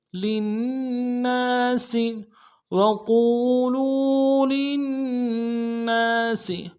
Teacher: لام کو نون کے ساتھ ملانا ہے، نون کے اوپر تشدید زور دیں گے اور اگلے نون کے ساتھ الف مدہ ہے، ایک الف دال